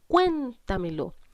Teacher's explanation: En la palabra cuéntamelo identifico dónde cargo la voz. Cargo la voz en cuen, porque digo cuéntamelo. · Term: palabra sobreesdrújula